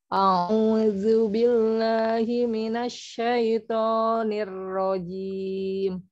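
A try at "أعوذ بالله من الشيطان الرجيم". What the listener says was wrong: A'udzunya masih ini. Jangan terlalu ini, terlalu mundur. A'udzu A'udzu billahi. Enggak usah terlalu ini, terlalu enggak usah terlalu ke belakang. Gini enggak usah.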